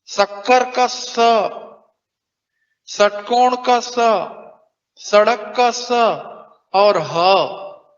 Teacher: फिर इसके बाद ऊष्म या संघर्षी व्यंजन है। इनको बोलते समय मुख में घर्षण पैदा होता है।